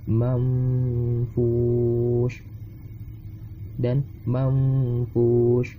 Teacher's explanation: ketika nun mati bertemu fa, maka hukumnya sebagai ikhfa dan dibaca samar-samar